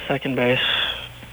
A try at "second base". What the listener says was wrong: Second base. Second. Although every time he says second, it sounds like he's saying sucking. Second base.